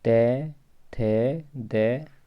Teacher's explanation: जो व्यंजन वर्ण जीभ की ऊपरी नोक द्वारा ऊपर के दांतों का स्पर्श करने से उच्चारित होते हैं, वे दंत्य व्यंजन कहलाते हैं।